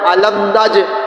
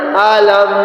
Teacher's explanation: میم ساکن کے بعد نون ہے، اس لیے یہاں اظہار شافی کریں گے اور میم کو غنہ کے بغیر ادا کریں گے اور میم کے اوپر صبت توسط بھی ہے۔